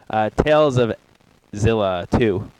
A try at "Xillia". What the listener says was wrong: Zillia. I think it's No, Zill. There's no Z in there. It could be Extremelia.